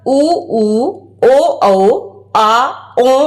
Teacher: पश्च स्वर है, यानी जीभ के पीछे का भाग कार्य करता है